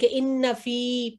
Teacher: جی یا ساکن سے پہلے کسرہ آئی ہے فا پر. تو یہ جی فی 2 سیکنڈ لمبا ہوگا